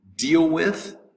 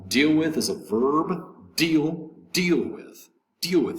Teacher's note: The accent is going to be over the deal, the word deal